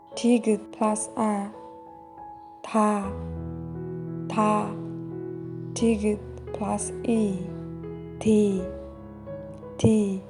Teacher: Tigut is pronounced D sounds or T sounds in English. It sounds more like between D or T sound.